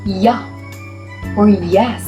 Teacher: For the sixth one, we have palatal, made with the middle of the tongue raised toward the hard palate